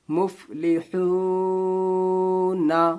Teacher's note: ہا کی آواز جو ہوتی ہے حلق سے ادا ہوتی ہے، یہ حروف حلقی ہے